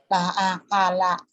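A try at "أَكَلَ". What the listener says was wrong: Bagus, pinter tuh.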